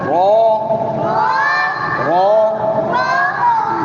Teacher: منہ کو گول کر کے، یہ لفظ بولا کرو، منہ کو گول کر کے. رو، اس پہ مد نہیں ہے، لمبا نہیں کرنا